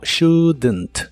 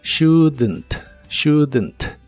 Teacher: es usarlas juntas en esta contracción shouldn't se pronuncia como shouldn't no se pronuncia la o ni la l de esta palabra pero sí le agregas un sonido e muy suave entre la d y la n para que se pueda pueda pronunciar mejor shouldn't shouldn't este auxiliar